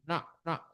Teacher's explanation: lidahnya itu menyentuh langit-langit mulut, jadi nak gitu, seperti orang India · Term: N titik bawah